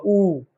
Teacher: ऊ हमारा ओष्ठ वर्ण है, इसके उच्चारण के लिए होठों का यूज होता है।